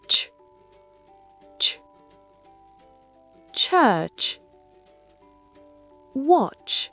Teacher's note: C'est un mélange entre une explosion et un frottement. Pour le son tch, imaginez un petit t avant le ch. C'est très sec.